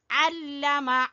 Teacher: عین کو گلے کے درمیان سے نکالیں گے